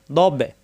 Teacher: দ জিহ্বার গড়ার কিনার উপরে মাড়িতে লাগাতে হবে